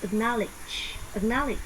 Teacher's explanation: Âm ơ, âm a ngắn và âm y ngắn.